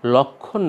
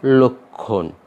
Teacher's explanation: প্রথম আদ্য অ হয়ে যাবে ও এর মতো। এই কারণে আমরা লক্ষণ না বলে উচ্চারণ করব লক্ষণ।